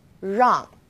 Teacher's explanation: the r is a little softer so try moving your tongue more to the back of your mouth